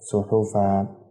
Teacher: وقف کے دوران ایک زبر ہٹ جائے گا، ایک زبر کو ایک الف کے برابر کھینچ کے پڑھیں گے، مثلا صحفن آگے وقف صحفا۔